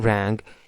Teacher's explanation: our back of the tongue is touching the soft palate in the last sound. So our the articulated closure is happening at the place of the velar. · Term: velar sound